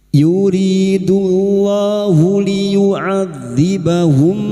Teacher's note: lam jalalah yang didahului dhamma dibaca tafkhim